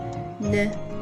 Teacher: your tongue is touching behind your upper teeth or gum, and as you release it to the neutral position, it makes n sound.